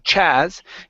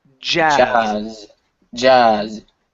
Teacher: word Jazz so here you're pronouncing a CH you're saying Chaz instead of CH it's j it's a voice sound